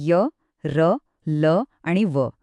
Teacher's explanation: ही व्यंजने स्पर्श आणि उष्म व्यंजनांच्या अगदी मध्ये येतात ज्यांना आपण अर्धस्वरही म्हणतो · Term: अंतस्थ व्यंजने